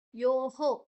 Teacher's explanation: ಓಕಾರದ ಮುಂದೆ ವಿಸರ್ಗ ಬಂದ್ರೆ ಹೋ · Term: ವಿಸರ್ಗದ ಉಚ್ಚಾರಣೆ